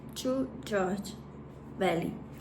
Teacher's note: Ele é como se fosse um T sem força. Aí ele fica parecido com esse som assim, ó.